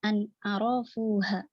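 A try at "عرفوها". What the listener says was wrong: Nggak ada arafuha, nggak ada mad pada ra. Kok ada arafuha? Arafuha gitu. Jadi baca itu ada stressing, tekanan biasanya pada mad. Yang tidak ada mad jangan.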